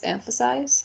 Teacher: It has 3 syllables, and the stressed syllable is the first one.